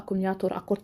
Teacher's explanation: Tələffüzdə isə qoşa k-lardan biri tələffüz olunur.